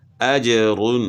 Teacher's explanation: اجر، یہاں جو ہے نا جیم جو ہے حروف قلقلہ میں سے ہے، تو اس کو ہلا کر پڑھیں گے، یعنی اس میں قلقلہ کریں گے